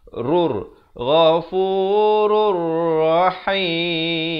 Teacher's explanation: tanwin bertemu ra dibacakan dengan masuk tanpa dengung. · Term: Idgham bila gunnah